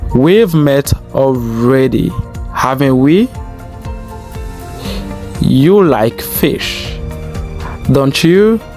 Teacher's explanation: le deuxième point de rising intonation qui est question tag that show uncertainty and require an answer. Ce sont des questions qui présentent des incertitudes et qui requièrent une réponse.